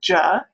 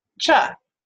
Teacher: our voiced sound is ja, and our voiceless is cha